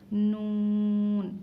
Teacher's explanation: ज़ुबान की नोक ऊपर के तालु को लगाने से नून, ये ज़ुबान की नोक होती है, ये सब तालु के नीचे आता है, लेकिन यहाँ के हिस्से को लगाओ आप, नून।